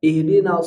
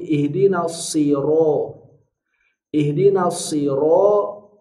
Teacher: ro ro sempurna harakatnya tebal